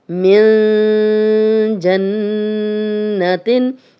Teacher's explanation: من جنت، من جنتن، اب نون ساکن کے بعد جیم آ گیا تو یہاں اخفا ہے، اخفا کا قاعدہ ہے، غنہ کر رہے ہیں، اور نون پہ شد ہے تو یہاں پہ دوسرا غنہ بھی ہو رہا ہے نون پہ شد والا، من جنتن۔ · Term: اخفا والا غنہ